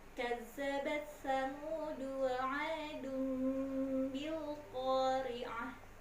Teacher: Di ayat keempat, perhatikan nih, za-nya seringkali tidak ditasydidkan. Za-nya tasydid ya nak ya, harus dibaca seolah-olah ada dua huruf, kazzabat. Kemudian samudu wa adu itu ada tanwin bertemu dengan huruf ba, itu adalah iklab.